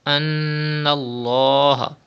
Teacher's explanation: there is zabar before the lam of Allah's name, so the lam will be thick